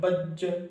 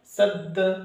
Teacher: इसके अलावा जितने होंगे उसमें कलकला नहीं होगा, इसी को बोलते हैं कलकला, मखरज टक्कर खाकर अलग हो जाते हैं।